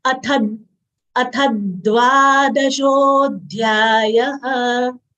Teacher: Tha is a Mahapran letter. We should exhale while saying Tha. It should not come out as Ta.